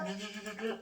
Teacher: 혀 양옆으로 공기가 르르르르 이렇게 타고 나온다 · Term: 유음